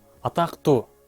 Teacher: Мында дагы л уяң тыбышы к каткалаң тыбышына башыйып, ага окшошуп, жыйынтыгында л т тыбышына өзгөрүлдү. Атактуу. Мында дагы биринчи мисалдагыдай эле бардык белгиси боюнча эмес, айрым белгиси боюнча гана окшошту. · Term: ассимиляция